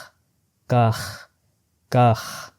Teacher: while you are pronouncing the part of visarga, you will find your vocal cords are not vibrating.